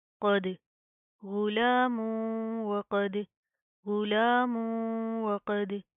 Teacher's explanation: तो हम यहाँ पर क्या करेंगे, हम गुन्ना करेंगे, नाक के अंदर साउंड पैदा करेंगे। आगे दाल के ऊपर जेज में कलकला करेंगे